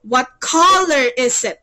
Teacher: It should be rising. Your intonation or your tone should be rising. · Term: rising intonation